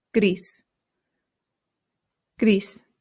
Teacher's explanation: in Spanish, you have to slightly round that R